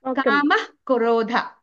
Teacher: ఆ పక్కన క ఉంది కాబట్టి కామః అః అనేది హాఫే చెప్పాలి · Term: విసర్గ